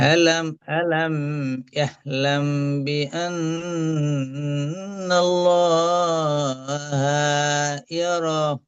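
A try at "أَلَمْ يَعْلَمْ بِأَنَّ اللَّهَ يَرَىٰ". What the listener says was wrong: ইয়া রটা টান হবে। সব ঠিক আছে, ইয়া রটা টান দিলে মাশাল্লাহ।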